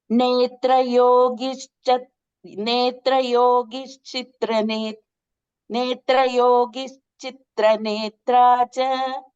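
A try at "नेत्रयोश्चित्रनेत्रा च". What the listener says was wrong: So there is no ga there. Netrayoschitra netra cha.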